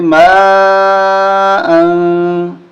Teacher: یہاں اخفا ہوگا، ناک میں آواز چھپائیں گے